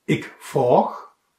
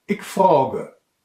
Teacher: Ik frag wird kurz gesprochen und daher meist unbetont verwendet. Ik frage wird langsamer, betonter ausgesprochen, zum Beispiel, wenn man ausdrücken will, dass jemand etwas nachdenklich spricht.